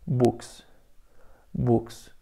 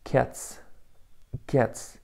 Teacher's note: ҳарфи S дар охири калима пас аз ҳамсадоҳои беҷаранг мисли K, T ва P се хонда мешавад.